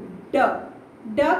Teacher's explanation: जो हमारे आगे की जीवा होती है वो टर्न करके ऊपर जाती है और झटके से नीचे आती है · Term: उत्क्षिप्त व्यंजन